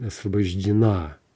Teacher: It's the final syllable that's stressed. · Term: end stress